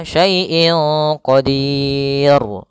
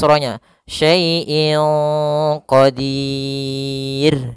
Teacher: huruf ra karena dia disukunkan maka di sini dia jatuh hukumnya adalah hukum ro tipis yang kita namakan dengan ro tarqik ro tarqq tidak boleh dibaca